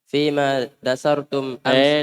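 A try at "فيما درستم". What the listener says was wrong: darastum. Bukan dasartum, darastum. Ayo.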